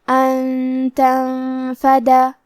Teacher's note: ساکن کو چھپاتے ہوئے اور غنہ کے ساتھ یہ حکم کو ادا کریں گے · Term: اخفاء